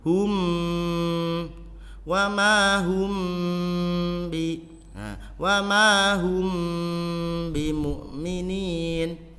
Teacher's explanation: Mim sukun bertemu ba, ikhfa syafawi, harus dengung.